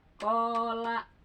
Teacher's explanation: Lanya kan miring itu mah enggak ada pemanjang enggak ada alif jadi seketukan qo la.